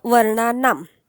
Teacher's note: आम का बरं म्हटलो शेवटी, कारण इथे आकारांत आहे, बरोबर. आकारांत आहे आणि याचा प्रोनाऊन्सिएशन जास्त करून हलंत म असतो. अर्धा म जो आहे ना, हे बघा, हा अर्धा म, फक्त म, आ नाही, फक्त म लक्षात घ्या.